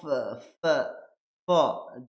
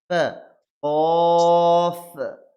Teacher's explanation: ওপরের দাঁত নিচের ঠোঁটের ভিজের অংশতে ঠেকবে